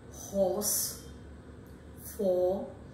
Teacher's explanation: So here the lips are loosely rounded, but in its counterpart, that is O, as you have it in words like or, office, or in words like horse, for, here you find that this sound is also back, stands midway between open and half open, and is the example of open lip rounding